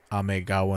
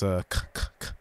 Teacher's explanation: Whenever it comes after a vowel, they change it to a g sound because it's easier to say Amegawa than Amekawa, because that's a k k k. There's like a little bit of a puff of air whenever you say k